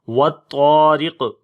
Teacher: والطارق، واو کو طا کے ساتھ ملائیں گے، وط تو طا کو موٹا پڑھیں گے اور یہاں پر طا کو لمبا بھی کریں گے